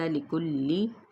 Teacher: کاف کے پیش کو لام کے ساتھ ملائیں گے، باریک ادا کریں گے